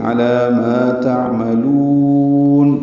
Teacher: یہ وقفاً مد عارض للسکون ہے، نون ساکن پہ اظہار ہے